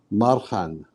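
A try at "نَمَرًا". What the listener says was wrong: Okay, so the ra got no sukoon, so it's got a fatha. So Marahan.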